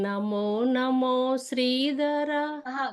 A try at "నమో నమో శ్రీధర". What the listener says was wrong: కాదు, మళ్ళీ అలా వెళ్ళిపోకు. నమో అలా ఫ్లాట్ కి వెళ్ళిపోకు.